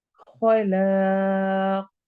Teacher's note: खौ हरूफ हलकी, ला अलिफ मद्दा और आखिर में कौफ को मोटा पढ़ना है और कलकला करना है